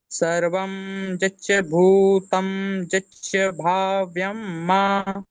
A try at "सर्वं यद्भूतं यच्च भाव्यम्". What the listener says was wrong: देखिए ध्यान से, सर्वम जद जद भूतम जच्च भाव्यम। है ना, जच्च जच्च दो बार नहीं है, एक बार जद है, जद भूतम है।